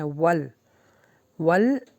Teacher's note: واو پر ہونٹوں کو گول رکھے، لام کے اوپر اپنی زبان کے مخرج کو روک لینا ہے